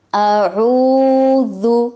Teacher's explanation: جو گردن کا بالکل درمیان ہے، جہاں سے گردن اٹھی ہوئی ہوتی ہے، تھوڑی سی ہڈی نکلی ہوتی ہے، مردوں کی زیادہ اور عورتوں کی کم، وہاں سے عین اور ہا ادا ہوگا. واو اور پیش کے لیے ہونٹوں کو گول کیا جائے گا. اعوذ، ذال کو نرمی سے ادا کیا جائے گا.